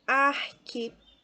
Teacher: veja que pé é a sílaba mais forte né e contando de trás para frente a terceira ou seja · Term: proparoxítona